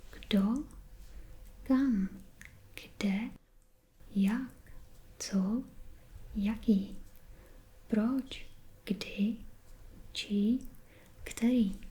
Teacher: So we have a rising intonation when we say those words.